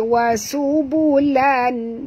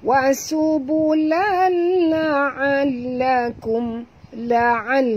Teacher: tanwin baris dua di atas bertemu dengan lam, maka kita kena masuk tanpa dengung idgham bila gunnah. Jangan baca wa subulan, bukan lan bunyi dia tapi bunyi dia lal.